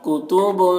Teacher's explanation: फ़ीहा कुतुबुन, देखिए यहाँ पर इख्फा कर रहे हैं बाद में, कुतुबुन, ठीक है, इसको इख्फा कहते हैं, आवाज़ को नाक में ले जाकर गुनगुनाते हैं थोड़ी देर तक